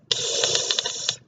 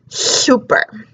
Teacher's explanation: Now, a lateral lisp is the tongue is behind the teeth, the jaw is up, but the problem is the air is escaping on the sides instead of the tip of the tongue.